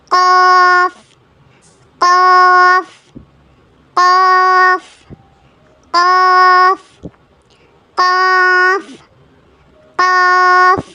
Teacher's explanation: இது நாக்கினுடைய உள் பகுதியில இருந்து வரக்கூடிய லெட்டர்.